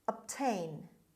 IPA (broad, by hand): əbˈteɪn